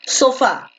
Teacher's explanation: si la mayor fuerza de voz se encuentra en fa en la última